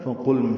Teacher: فا کو جلدی پڑھیں گے، قاف پر لام ساکن پہ اظہار